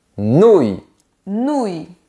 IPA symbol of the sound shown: u